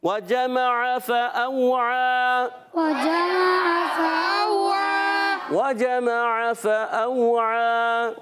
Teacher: فأوعى، یہاں پر جو ہے واو ساکن سے پہلے زبر، واو لین ہے، نرمی سے ادا کریں گے، حمزہ کو خوب ظاہر کریں گے۔ عین الف زبر آ، عین پر کھڑا زبر، ایک الف کھینچنا ہے، پھر مل کر پڑھیں گے وجمع فأوعى، وجمع فأوعى وجمع فأوعى۔